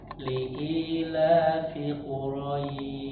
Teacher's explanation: di kalimat li'ilafi Quraisy. Di situ fi-nya nggak boleh panjang